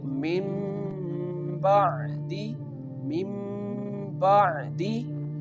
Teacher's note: The Noon sound change into the Mim sound. Mim Ba'di. Sometimes on this letter before Ba, here a little Mim is mentioned.